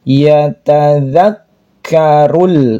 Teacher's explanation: huruf k-nya bertasydid maka harus ditekan ada nafas yang keluar